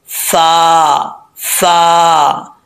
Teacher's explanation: ऊपर वाले जो दो दांत है उनका नीचे वाला किनारा नीचे वाले होठ के तरी वाली जगह पर लगेगा तो फा पढ़ा जाएगा फा फा इसको होठ गोल करके पढ़ेंगे तो गलत हो जाएगा · तरी वाली जगह पर लगेगा तो फा पढ़ा जाएगा फा फा इसको होठ गोल करके पढ़ेंगे तो गलत हो जाएगा होठ नहीं गोल करने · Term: फा का मखर